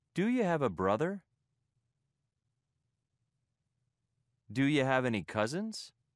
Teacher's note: Listen to the pronunciation of do you? Notice how the words are pronounced together quickly.